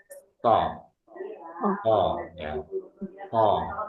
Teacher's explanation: Yang keempat adalah itbak. Suaranya mengumpul, nempel. Lidah kita ini nempel. Nempel di langit-langit.